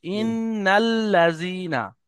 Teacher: ইন্নাল্লাযীনা আমানু ইন্নাল্লাযীনা, ওয়া দেখেন লামের আমিলুস উপরে তাসদিদ আছে, লামকে দুবার উচ্চারণ করতে হবে